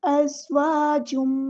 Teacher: تنوین کو ہم میم کے اندر مکس اپ کر دیں گے، ادغام ہوگا، ادغام مع الغنہ ہو رہا ہے، ادغام ناقص ہو رہا ہے.